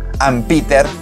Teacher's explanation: la M con la P hace un golpeteo en el micrófono que supuestamente este micrófono lo neutraliza. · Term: vocal plosives